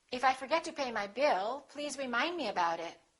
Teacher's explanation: we have two Focus words Bill and remind